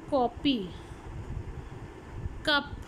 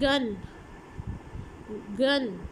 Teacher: व्हीलर sounds व्हीलम से निकला है, व्हीलम हम कहते हैं सॉफ्ट पैलेट को। The back of the tongue is used against the soft palate. For example मैं कहती हूँ कॉपी, कप, कप में आप गौर कीजिए, back of the tongue is raise towards the वीलम, तो ये आपकी क साउंड है।